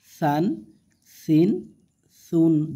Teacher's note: জিব্বার আগা থেকে পাতলা করে সা